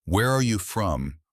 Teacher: falling intonation at the end of open-ended information questions